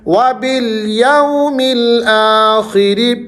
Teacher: آخری را کو آپ نے باریک پڑھنا ہے کیونکہ اس کے نیچے زیر ہے۔ جب را کے نیچے زیر ہوگی تو ہم نے اس کو باریک پڑھنا ہوتا ہے۔